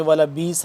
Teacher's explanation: با حمزہ زیر بی، ذرا سا جھٹکا دے کر پڑھیں گے